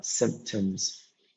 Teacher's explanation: we have the stress on the first syllable, sim, which is here the stress in the first one, symptoms.